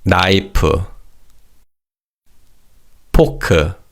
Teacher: Remember that Korean language doesn't have an F sound. So when English words with the letter F are said in Korean, it's usually pronounced as a piup sound, which is similar to the P sound in English